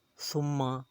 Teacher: ثم تھا جب پڑھیں گے سیٹی کی آواز نہیں نکلنی چاہیے، اور میم مشدد ہے، میم مشدد پر غنہ کیا جاتا ہے۔